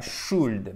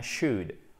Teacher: Le L ne se prononce pas.